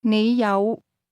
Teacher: The word have is pronounced with a low, rising tone.